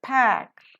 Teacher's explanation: Here P is aspirated because P occurs in the initial position of the accented syllable.